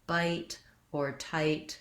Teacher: Then moving to words like bite or tight, where you have to say another consonant sound after your I, just make sure that you're holding the I long enough and you're moving to both positions. One of the errors I hear on I is that people will just say the ah sound. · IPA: /aɪ/